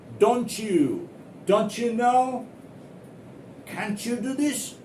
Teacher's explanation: after T, if U is there, then pronounce it like CH. CH. For example, DON apostrophe T, then U, YOU.